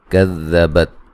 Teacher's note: ذال کو نرم ادا کرنا ہے، تا کو ہلانا نہیں ہے